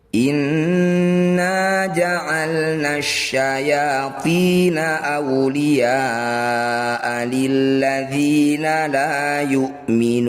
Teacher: Cara bacanya, ya yang bertanda layar panjangkan 6 harokat. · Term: mad wajib muttasil